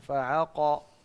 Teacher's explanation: قاف کو آپ گلے سے نہ نکالا کریں. جی فعقروها قاف کو موٹا کرنا ہے